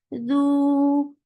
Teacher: circle your lips and make it 2 counts long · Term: dhamma